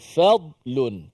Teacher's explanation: Kemudian asabakum fadlun, kalimah fadlun tu dad mati di tengah-tengah itu. Fad ditebalkan dad dan tidak diqalqalahkan dad itu.